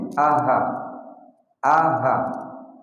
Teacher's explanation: Dan aqsal halqi, keluar di pangkal tenggorokan kita.